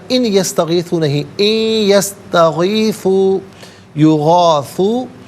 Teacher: ان میں نون ساکن ہے، اسے یا کے ساتھ ملائیں گے، یا کی آواز کو غننے کے ساتھ ادا کریں گے